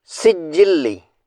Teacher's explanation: سین پر تشدید کے باعث زور سے ادا کریں گے